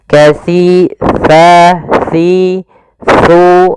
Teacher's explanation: tempat keluar hurufnya, yaitu ada di mana ujung lidah kita menempel dengan gigi seri atas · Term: huruf sa